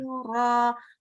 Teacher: Nah, panjang ro-nya sama dengan di-nya. Jangan kelebihan panjangnya.